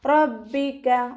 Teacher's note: സീന് കൽക്കലയുടെ letter ഇല്ലാത്തത് കൊണ്ട് half സുക്കൂന് കൊടുക്കുക, ശ്രദ്ധിക്കുക കേട്ടോ. റബ്ബിക റ ഫതഹ ആയതുകൊണ്ട് നമ്മൾ ഉയർത്തിയിട്ട് ഉച്ചരിച്ച് കൊടുക്കും